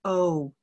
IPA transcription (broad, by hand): ou